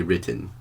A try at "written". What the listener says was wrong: why do you skip the t please respect the letters i mean if the two letters that means you gotta pronounce it properly